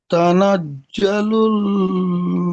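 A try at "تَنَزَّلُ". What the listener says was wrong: এখানে আপনি পড়ছেন তানাজ্জালুল, জিম পড়ছেন। জা আর জিম দুটির মাখরাজ আলাদা। জিমের মাখরাজ হলো জিভের মাঝখান এবং তার বরাবর উপরের তালুর সাথে লাগিয়ে উচ্চারণ হয় জিম। আর জা, জা, জায়ের মাখরাজ হলো জিভের আগা, সামনের দুই দাঁতের আগার সাথে লাগিয়ে উচ্চারিত হয় জা।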